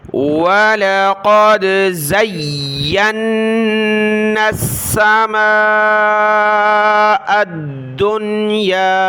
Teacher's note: نون کے اوپر تشدید کی وجہ سے ہم نے غنہ بھی کرنا ہے، یعنی ناک میں آواز چھپانی ہے۔